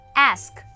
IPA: æsk